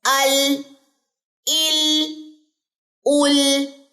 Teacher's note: اور آواز جو ہے وہ سائڈوں سے باہر کو آ رہی ہے